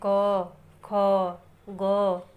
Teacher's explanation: क वर्ग को हम कंठ से बोलते हैं